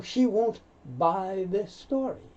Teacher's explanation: Two S's, you only hear one. You don't hear buy this story because we'd have to pause.